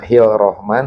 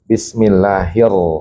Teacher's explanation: Jadi sehingga tidak baca hil rahman tapi diidgamkan alif lamnya dimasukkan ke ro bismillahir. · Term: alif lam syamsiyah